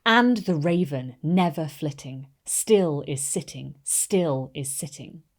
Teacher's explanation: contains a total of eight syllables that's four metrical feet and notice how the stressed unstressed Rhythm creates a falling quality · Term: trochaic tetrameter